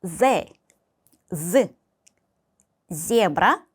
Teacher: Z는 이빨과 윗니와 아랫니 사이로 뱉어내는 그런 소리입니다.